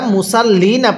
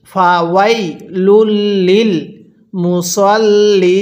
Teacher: ওয়াকফের সময় নুনের উপর জবরকে বাদ দিতে হবে